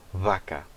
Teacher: você usa eh os dois lábios em vez de utilizar o os dentes eh de cima e o lábio de baixo · Em espanhol eles têm já o V é bilabial.